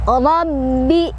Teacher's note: ro-nya dibaca secara tafkhim karena ro-nya berbaris fathah, jadi dibacanya tebal ya, ditebalkan. Rabbi ditekan, ba-nya punya tasydid.